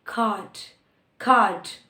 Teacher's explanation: So in the British accent, after a vowel, when R comes, it is not pronounced.